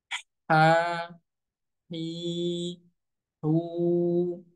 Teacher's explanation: ingat keluar daripada tengah tenggorokan hi, hu, ya, jangan juga sampai masuk ke dalam rongga hidung